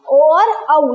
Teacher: जिनका उच्चारण स्थान कंठ तथा होठ दोनों से होता है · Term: कंठोष्ठ्य वर्ण